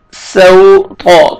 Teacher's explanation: سین کو سین پڑھیں گے تاکہ صاد میں ساؤنڈ مکس نہ ہو ، سوطا، طا کو موٹا کر کے پڑھیں گے، سوط عذاب